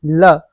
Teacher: ल जो होता है आपका वो दंत ध्वनि है, जो हमारी जीभ है इसको बोलते समय दांतों को टच करती है